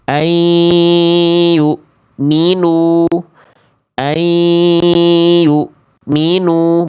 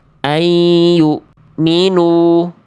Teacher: Tapi ditekan enggak dua harakat semuanya idgam biguna itu ditekan dua harakat eh maaf ditahan dua harakat ya. Selagi nun sukun atau tanwin berjumpa dengan empat huruf ini, idgam biguna harus ditahan dua harakat. Jangan sampai cuma dileburkan dengan dengung tetapi tidak ditahan dua harakat.